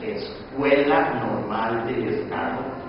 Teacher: we read every syllable with the same amount of time. And another important difference is that every syllable, every vowel within the syllables is pronounced fully. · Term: Syllable time